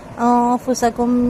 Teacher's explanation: نون ساکن کے بعد فا ہے، اخفا ہوگا باریک اخفا · میم ساکن کے بعد میم مشدد ہے، ادغام میں شفوی ہوگا